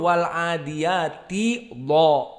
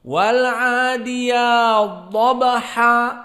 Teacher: Jadi dibaca wal adiyat dhabha, ya-nya mad tetap dibaca wal adiyat langsung masuk kepada dha dalam keadaan musyaddadah karena idgham. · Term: idgham al-kabir